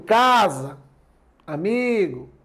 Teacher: são palavras paroxítonas, tendo em vista que a sílaba mais forte é a penúltima.